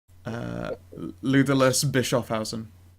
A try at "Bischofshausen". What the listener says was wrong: It's a German word. You would pronounce the S. They don't do silent letters.